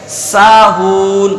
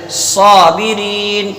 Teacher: اب رہا سین اور صاد کا فرق. تو سین میں صفت استفال یعنی باریک ہونا ہے، اور کیا کہتے ہیں صاد میں صفت استعلا یعنی پر ہونا ہے. جب سین کو ادا کریں گے تو پھر زبان کو ہم سیدھا رکھیں گے.